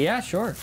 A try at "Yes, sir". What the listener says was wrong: No, not sure. Yes, sir. Yes, sir. You're mispronouncing it.